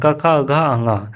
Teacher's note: क वर्ग का उच्चारण जो होता है ना कंठ से होता है